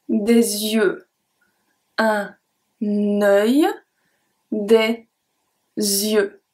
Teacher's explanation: I do the link between des and yeux. We actually never say yeux by itself.